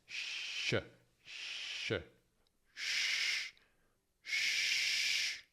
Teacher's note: labbra sono leggermente protruse e il dorso della lingua si trova tra alveoli e palato. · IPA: /ʃ/